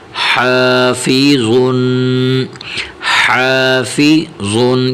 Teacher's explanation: ضا دو پیش ظن، حافظن، حافظن. یہاں پر جو ضا حرف ضا آیا ہوا ہے تو اسے بھی موٹا کرنا ہے، حا کو باریک کرنا ہے اور ضاد کو موٹا کرنا ہے